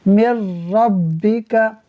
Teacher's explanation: देखिए यहाँ नाज़रीन नून साकिन के बाद रा हुरूफ यरमलून में से है, लिहाजा यहाँ इदगाम होगा, मीम को रा से मिलाएंगे, मगर यहाँ हम गुन्ना नहीं करेंगे